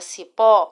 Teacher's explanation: a palavra Cipó e apresenta sílaba forte no pó